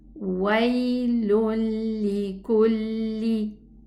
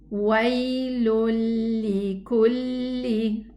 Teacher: So this is complete idgham. The noon totally merged into the lam.